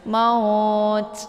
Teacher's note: kalau ta itu disukunkan, maka di sini ada desis angin karena sifatnya hamas ya. Maut ya. Ada s-nya, ada bunyi anginnya ya.